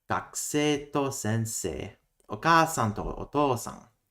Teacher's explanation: To doesn't change the pitch accent of the noun.